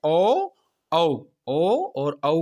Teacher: कंठोष्ठ, जिसमें कंठ और ओष्ठ दोनों के द्वारा उच्चारण किया जाए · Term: कंठोष्ठ वर्ण